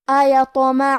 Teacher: یہاں ہمیں تو کو قلقلہ سے پڑھنا ہے. قلقلہ کا معنی ہے حرف ساکن کو ہلانا، لہذا ہم حرف تو کو ہلاتے ہوئے یہ کلمہ کو پڑھیں گے